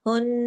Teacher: ये नून पे तशदीद की वजह से गुन्ना हुआ